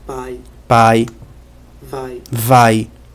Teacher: ai é um ditongo decrescente decresce da vogal a para semivogal I